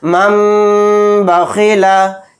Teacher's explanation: نون کو میم سے بدل کر غنہ اور اخفا کے ساتھ اس طرح پڑھیں گے، مم بخیلا۔ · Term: اقلاب